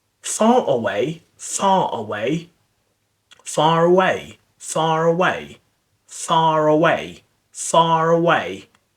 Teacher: it's the linking R where you just connect two vowels together